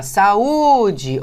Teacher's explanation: Eu vi que a sílaba tônica, né, é o U.